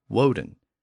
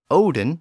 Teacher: The later Norse speakers tended to drop the W sound when it appeared before a vowel. So Odin, without the W, developed as a later version of the same name.